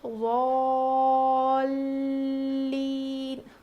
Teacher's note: یہاں پر لام پہ تشدید ہے تو یہاں پر ہم تھوڑا وزن روکیں گے